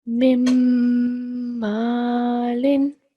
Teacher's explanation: because we have alif of elongation next to meme, carrying a fatha stroke, we'll prolong it for 2 seconds